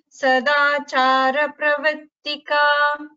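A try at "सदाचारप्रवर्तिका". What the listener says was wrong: So here Pravartika, there is a dvutva. So Sadachara Pravartika. So it is not Sadachara Pravartika plain.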